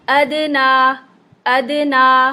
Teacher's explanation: ना पढ़ते हुए नाक में आवाज नहीं जाएगी नाक नहीं करेंगे ठीक है आखिर में नून गुना उर्दू वाला नहीं लगाएंगे अदना · نا پڑھتے ہوئے ناک میں آواز نہیں جائے گی، ناک نہیں کریں گے، ٹھیک ہے، آخر میں نون غنہ اردو والا نہیں لگائیں گے۔